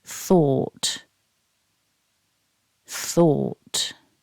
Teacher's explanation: Then we have the long or vowel, or, followed by an unvoiced t.